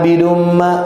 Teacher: Bidum itu dibaca idgham bigun harus ditahan abidum